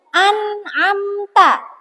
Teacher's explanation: An'amta, karena dia jelas. Nun bertemu dengan ain, dia jelas, nggak boleh ang, nggak boleh am, tapi jelas nunnya ini yang sukun jelas ya. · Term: idhar